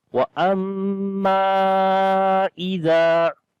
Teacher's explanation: وَأَمَّا إِذَا, and so we long here 3 to 4 seconds as we say وَأَمَّا إِذَا. Zal we read in soft sound, and also there is alif madda we long.